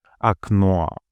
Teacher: In окно, the final O is stressed and fully pronounced as it is in the alphabet, окно. The first O, being the closest pre-stressed vowel, is pronounced briefly according to first-degree reduction, with a sound similar to that in quickly spoken fun or sun we just discussed.